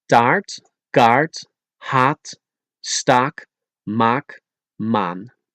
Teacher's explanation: the double A, which is long, so a little like ah or ra or ja, but with open mouth further and pronounce it like the Spanish a. Examples are taart, kaart, haat, staak, maak, maan.